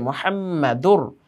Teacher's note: মিমের মধ্যে তাসদীদ হওয়ার কারণে ওয়াজিব গুন্না হয়েছে